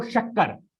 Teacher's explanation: अगर आप बोलोगे तो आपका जो जीभ है वो हल्का सा तालू के तरफ स्पर्श कर रहा है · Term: तालव्य शाह